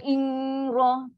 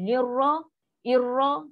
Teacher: Tak ada dengung, tak ada izhar, tak ada apa. Masuk betul. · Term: Masuk 100%